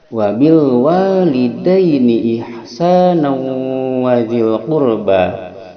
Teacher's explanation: Memasukkan tanwin tanwin fathah, memasukkan tanwin fathah kepada waw, maka dia dinamakan idgham bi gunnah, memasukkan tanwin fathah pada waw disertai dengungan